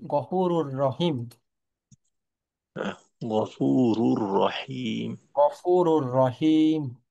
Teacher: বেলা গুন্নার নিয়ম অনুযায়ী তাসজিদ দিয়ে গুন্না ছাড়া মিলিয়ে পড়তে হবে।